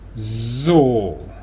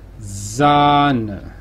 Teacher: ver algunos ejemplos el adverbio así en alemán se dice eso si veis una s a principio de sílaba pues se hace sonora tenéis que hacer vibrar las cuerdas vocales la palabra nata se dice sanz aquí también se hace evidentemente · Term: s sonora